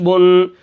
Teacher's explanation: آخر میں ناک کے اندر آواز جاتی ہے, حمزہ 2 زبر ان.